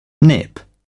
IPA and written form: nɪp (nip)